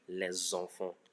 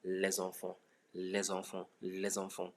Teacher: Look at the liaison there, because S ends with a consonant and E in the enfant starts with a vowel. Then there's a link, and that S now changes to Z in the pronunciation.